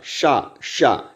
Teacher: जहां से हम लोग टा वर्ग का उच्चारण करते हैं, वहां से दोस्तों इस वाले सा का उच्चारण होगा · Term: मूर्धा